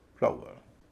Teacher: फ्लावर, यहाँ पर कुछ लोग कन्फ्यूजन हो जाता है, वे डब्ल्यू को कॉन्सोनेंट मान लेते हैं, लेकिन डब्ल्यू जो है यहाँ कॉन्सोनेंट नहीं है, वॉवेल है। OW का उच्चारण हो रहा है आऊ, जो कि डिप्थोंग है, लंबा स्वर है, इसलिए डब्ल्यू के बाद शब्द बटेगा।